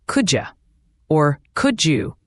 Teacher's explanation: The D and Y sounds often merge.